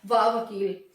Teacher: दांत और होंठ हमारे दोनों टच होते हैं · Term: dantoshth व्यंजन